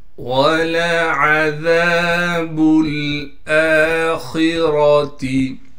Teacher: وَلَعَذَابُ الْآخِرَةِ. واو کو صاف کر کے پڑھنا ہے بغیر کھینچے، لام کو باریک کر کے پڑھیں گے، عین کو صاف کر کے گلے سے نکالیں گے.